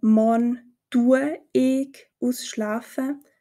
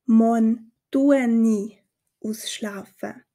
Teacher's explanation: fügen ein N als Verbindung zwischen diesen 2 Vokalen hinzu · Weiteres Beispiel: Anstelle von morn tue ich ausschlafen, sprechen wir morn tue ni ausschlafen. Auch hier verwenden wir wieder das N als Vokalverbindung zwischen der Verbendung, die ein Vokal ist, und E für ich, also die Person.